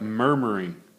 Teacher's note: the stress is on the first syllable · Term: dactyl